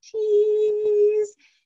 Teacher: a nice high smiley ee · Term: long e sound